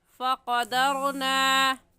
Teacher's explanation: فقدرنا، را ساکن سے پہلا والا لفظ دال ہے جس کے اوپر زبر آ گیا ہے، اور قاعدہ ہے کہ را ساکن سے پہلے زبر آ جائے تو را ساکن کو پر یعنی موٹا کر کے پڑھتے ہیں. اور موٹا کرنے کا طریقہ کہ آپ کے دونوں ہونٹ گول ہو جائے